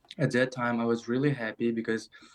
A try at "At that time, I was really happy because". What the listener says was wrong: So he's lost his intonation. He's lost his positivity a little bit. At that time, I was really happy. It doesn't sound like he's happy. So there is a disconnect between the words, I was really happy, and the facial expression and the intonation. It doesn't sound like the candidate's happy.